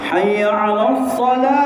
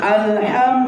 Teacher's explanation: huruf ha ini kaedahnya dia terletak di tengah-tengah kerongkong